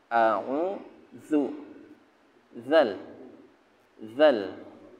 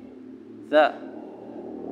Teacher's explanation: Bukan da, tapi zal. Ya, makharijul hurufnya ada di ulyas sanaya, 2 gigi depan, agak keluar di ujung lisan atau ujung lidah, agak keluar anginnya. Za.